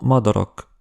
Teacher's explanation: Le A court est peut-être le son hongrois le plus difficile à bien prononcer pour un francophone : [ɒ]